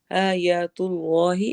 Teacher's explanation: जलाला को मोटा करना है